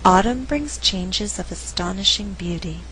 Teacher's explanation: we have more content words Than Words being stressed the verb brings is not stressed because I want to create a good rhythm in the sentence I alternate the stress and what results is a rhythm like